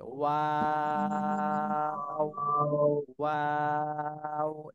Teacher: 3 আলিফ টেনে তারপর ছাড়তে হবে